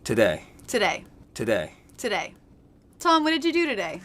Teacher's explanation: these T's are all true T's and not flap T's that's because they're beginning sentences so we're not going to reduce that to a flap T